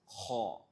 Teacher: You raise the back part of your tongue and you pronounce it with a full mouth. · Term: heavy letter